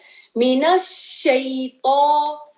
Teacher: शीन जो है स्प्रेड होती है साउंड, ठीक है। इसके एट्रीब्यूट में से स्प्रेडिंग ऑफ द साउंड, ठीक है।